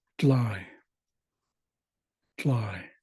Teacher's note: they've removed the r replaced it with an L because it's easier to pronounce